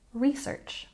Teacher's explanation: in American English you will hear people putting the stress on the second syllable but most often it's on the first syllable